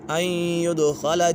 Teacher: یہاں پر غنہ ہوگا اور دال کے اوپر قلقلہ ہو رہا ہے